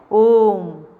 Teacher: जैसे मैं आपको इसका एक एग्जाम्पल देती हूँ, यहाँ नहीं लिखा हुआ है। जैसे हम बोलते हैं ओम, तो हम ओ बहुत लंबा ले जाते हैं, थोड़ा ज़्यादा समय लगाते हैं उसमें। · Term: प्लुत स्वर